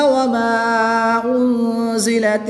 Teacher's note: نون ساکن کے بعد زا حروف اخفا میں سے ہے تو یہاں پر اخفا ہوگا، یعنی غنہ زمانی کر کے پڑھیں گے۔ · الف مدہ کے بعد حمزہ دوسرے کلمے میں ہے تو یہاں پر مد منفصل ہوگی، 2 سے 3 الف تک کھینچ کر پڑھیں گے۔